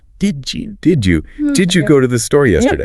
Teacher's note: Think about the phrase, "Did you?" When we say that quickly, the D and the Y literally crash into each other and mutate into a J sound.